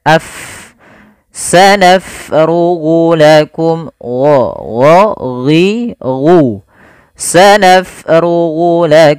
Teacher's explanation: auh pada lafal bacaan Fanya kita alirkan nafasnya sanaf AF naf kesalahan yang terjadi pada lafal hurufa dia menjadikan hurufnya menjadi P